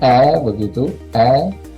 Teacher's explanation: Kemudian ada bunyi E pendek, namanya sekul. Ini dibacanya E begitu, E, bunyinya E, sekul.